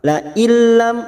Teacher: setiap nun sukun atau tanwin yang bertemu dengan dua huruf yaitu huruf lam dan huruf ro maka hanya masuk tanpa mendengung namanya bacaan idgam bila gunah la Il masuk k huruf lam